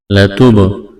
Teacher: با یہاں پر ساکن ہے، با کے اوپر جزم ہے تو قلقلہ کریں گے با پر